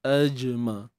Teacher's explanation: Jim yang sukun ni qalqalah sughra lah kita panggil kan. Lantunan yang bersahaja.